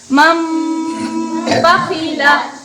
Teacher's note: نون ساکن کے بعد با آ جائے، نون کو میم سے بدل کر غنہ اور اخفا کے ساتھ پڑھیں گے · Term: اقلاب